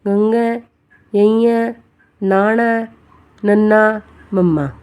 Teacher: ਜਿਨਾਂ ਧੁਨੀਆਂ ਨੂੰ ਉਚਾਰਨ ਵੇਲੇ ਆਵਾਜ਼ ਨੱਕ ਰਾਹੀਂ ਹੋ ਕੇ ਨਿਕਲੇ ਉਸ ਨੂੰ ਨਾਸਕੀ ਜਾਂ ਅਨੁਨਾਸਕੀ ਅੱਖਰ ਕਿਹਾ ਜਾਂਦਾ ਹੈ।